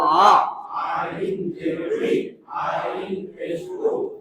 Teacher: আইন হলকের মাঝখান থেকে গলায় চিপে আদায় হবে।